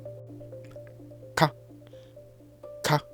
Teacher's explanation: But for ka, ta, pagyo, the consonants are plosives. When you stretch them, the first beat is blockage of airflow, so you won't hear anything. It's like you're about to cough, but something suddenly stops you, and then the sound releases.